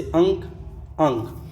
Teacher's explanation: अनुस्वार वर्ण में नाक से अधिक सांस निकलती है और मुंह से कम